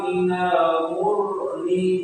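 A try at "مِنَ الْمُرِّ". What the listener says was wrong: sifat hurufnya rafanya belum dapat, belum keluar yang ru bar.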